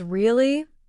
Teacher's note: if someone says really with a rising tone, it means surprise or curiosity. But if they say really with a flat or falling tone, it might mean disbelief or even boredom.